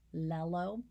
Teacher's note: the yeah at the beginning of yellow is taking on the features of that second l sound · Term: assimilation